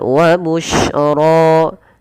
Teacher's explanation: Kemudian lafal wa busyra, shin itu memiliki salah satu sifat namanya tafasyi. Apa itu tafasyi? Yaitu intisyarus saut, menyebarnya suara di dalam mulut. Ash tidak dibaca wa busra.